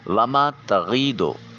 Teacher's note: نون کو اپنے مخرج میں چھپا کر ادا کرنے کے طریقہ کار کو اخفا کا قانون کہا جاتا ہے۔ وما تغیدو الف خالی از حرکت ما قبل میم کے اوپر زبر، اس کو ایک الف کے قیم مقام لمبا کریں گے۔ وما تغیدو ضاد حرف مستعلیہ ہے، موٹا اور پر کر کے ادا کیا جائے گا۔